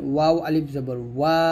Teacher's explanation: ওয়াওটা দুই ঠোঁট গোল করে উচ্চারণ করবেন